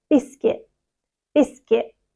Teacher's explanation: the t is almost a glottal stop so we don't really pronounce the T very much